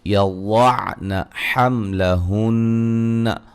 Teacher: واد کو موٹا ادا کریں گے، میم ساکن کا اظہار ہے، نون مشدد پہ غنہ ضروری ہے. اگر ہم وقف کریں گے تو حملہن ایسے وقف کریں گے، ٹھیک ہے، مشدد کے غنے کی مقدار کو ادا کرتے ہوئے نون کو ساکن کر دیں.